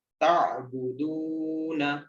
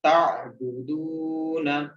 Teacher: اس میں عین کو آپ نے گلے سے ادا کرنا ہے اور واو مدہ ہے، اس کو آپ نے لمبا کرنا ہے